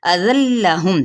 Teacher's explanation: ٹھیک ہے، وقف بالابدال، لیکن اگر ملا کے پڑھنا چاہیں اذلہم، تنوین زبر کو لام کے ساتھ جب ملائیں گے تو یہاں پہ ادغام بلا غنہ کا ہوگا ، اب معل غنہ نہیں، یعنی بغیر غنے کے ہم پڑھیں